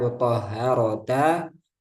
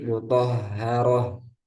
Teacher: maka dibaca ha sukun tanpa dipanjangkan